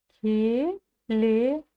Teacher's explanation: Главное ударение будет стоять в слове келеді на второй букве Е.